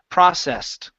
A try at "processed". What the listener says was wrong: Okay, give me a T at the very end. Processed.